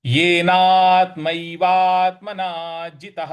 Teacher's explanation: त के बाद जो विसर्ग है उसके आगे कुछ नहीं है, इसलिए वहां पे ह का उच्चारण करेंगे।